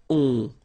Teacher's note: you don't pronounce the final s, you get the on sound. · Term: nasal